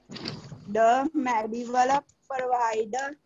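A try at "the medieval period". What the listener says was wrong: बेटा प्रोवाइड नहीं हैगा, द मेड्यूअल पीरियड है, द मेड्यूअल पीरियड।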